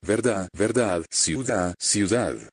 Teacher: You don't pronounce the D in words like verdad, verdad, ciudad, ciudad.